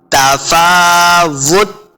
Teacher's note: वाव के ऊपर अपने होंठ गोल करने हैं, ता के ऊपर कलकला नहीं करना, सिर्फ ता साकिन की आवाज़ आएगी।